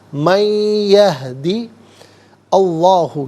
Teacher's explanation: اسے یہدی کے یا کے ساتھ ملائیں گے اور یا کی آواز کو غنّے کے ساتھ ادا کریں گے · یہدی میں دال کے نیچے زیر ہے، اسے اس میں اللہ کی حرف لام کے ساتھ ملائیں گے. درمیان میں سے الف یعنی حمزہ کو حذف کیا جائے گا